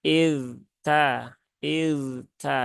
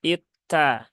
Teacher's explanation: huruf dalalnya mati ya tetapi ini tidak boleh diidgamkan ya tidak boleh diidgamkan dia harus dibaca dengan izhar maka idta idta ya bukan itta ya karena di tempat kita · yang diidghamkan tetapi di sini enggak maka kita tidak boleh mengidghamkan harus dibaca dengan izhar masing-masing